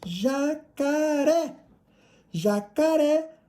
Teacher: Jacaré, a última sílaba tônica é o ré.